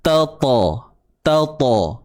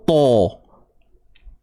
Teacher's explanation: Huruf ta bukan makhraj bibir. Huruf ta hujung lidah naik ke pangkal gigi, tempat tumbuh gigi.